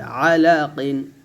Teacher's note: আইনটা গলার মাঝখান থেকে চাপ দিয়ে বলতে হবে